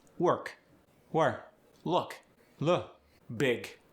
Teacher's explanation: The final K and the final G are both softened at the end of words, especially after vowels.